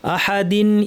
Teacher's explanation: তানবিনের পরে হামজা এসেছে এই তানটা স্পষ্ট